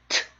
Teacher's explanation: 혀 끝과 입천장이 닿았다가 이제 공기가 막혔다가 터지면서 나는 소리입니다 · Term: 자음